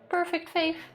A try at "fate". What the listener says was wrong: Fate. No, fate, not faith. Fate. Fate and faith are 2 different things.